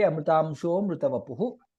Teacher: We should not be chanting Amrutamsho amrutavapuh. While grammatically it is correct, while chanting together, we should say Amrutamsho mrutavapuh.